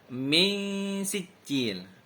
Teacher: Karena ada nun mati bertemu dengan huruf sin. Cara bacanya samar. Samar membentuk huruf sin. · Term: ikhfa hakiki